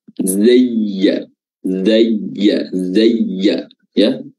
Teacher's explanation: huruf ya ini makhrajnya adalah wasatul lisan, pertengahan lidah diangkat yang hampir bertemu dengan langit-langit, maka itu lidahnya betul-betul terangkat. Zayya, zayya, zayya, ya, dan diayun, ditahan dengan tasdid, seakan-akan dia ada ya sukun dan ya berharokat.